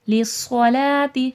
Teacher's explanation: للصلاۃ، صاد موٹا کر کے بھی پڑھا جائے گا اور صاد میں صفیر کی بھی آواز آئے گی. صفیر یعنی کہ سختی سیٹھی کے ساتھ پڑھا جائے گا